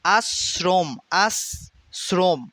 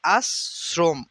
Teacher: তালব্যস্ উচ্চারণ হচ্ছে না আশ্রম হচ্ছে না কিন্তু তালব্য স এটা হবে দন্তস এর উচ্চারণ